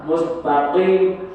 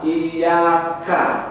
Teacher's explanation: Tapi kalau dijelaskan, qaf itu lebih ke dalam sana di pangkal lidah. Nah, di sini qafnya mustaqim, Kalau kaf di atas, iyyaka, mustaqim, iyyaka.